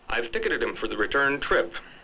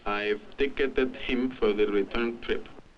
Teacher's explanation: the stressed syllables tick turn and Chip are lengthened the unstressed syllables are crowded together and reduced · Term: lengthening of stressed syllables